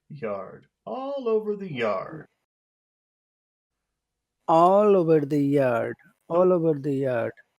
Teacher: when you start a phrase it will it will have a high sound but then you finish sounding serious